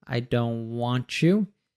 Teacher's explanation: the U reduces so it's want you want you the don't we have a stop T so we don't pronounce that T